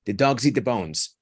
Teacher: you put the Z from the dogs next to the vowel so zit the dogs eat the bones try to pronounce that